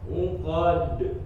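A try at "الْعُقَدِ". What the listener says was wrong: Langsung pantulin. Uqad. Nah, langsung dilepas posisi lidahnya. Uqad. Masih ketahan dikit. Uqad.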